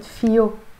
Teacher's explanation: But in Lebanese Arabic we don't pronounce it فيه, we pronounce it فيو. This H is pronounced as a ي, and we're changing the he into a O.